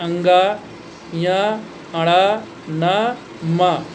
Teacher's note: इन 5 वर्णों को अगर आप नाक बंद करके सोचें कि उच्चारण कर लें तो स्पष्ट उच्चारण नहीं हो पाएगा, इसलिए इनको अनुनासिक व्यंजन कहते हैं या नाक से उच्चारण होने वाला व्यंजन कहते हैं। · इनका उच्चारण करने के लिए श्वास को अंशतः नासिका से बाहर निकालना पड़ता है